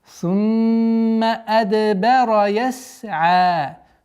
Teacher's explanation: Удержание назализации в размере двух огласовок. Здесь у нас правило калкаля, взрывность, так как звук даль относится к одному из 5 букв калкаля.